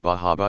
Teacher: that special down east accent where the r sound is being dropped bar harbor is pronounced like bahaba and lobster sounds like lobster